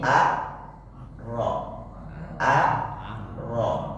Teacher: karena huruf Ra itu huruf tebal, maka jangan dibawa diseret huruf A yang tadinya tipis dimasukkan ke dalam tebal.